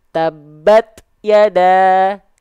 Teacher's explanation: ketika sukun percikan nafasnya lebih kerasa